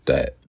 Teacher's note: Voiced the sometimes becomes d or d. This is a voiced dental stop. You could say that it's somewhere between d, a d sound, and a voiced the sound.